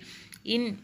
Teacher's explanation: இன் அப்படின்னா முன்ன மூக்கொளி